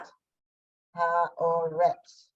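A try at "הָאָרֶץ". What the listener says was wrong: Haaretz. You're forgetting one of your basic old-fashioned vowels. This equals this. Ah,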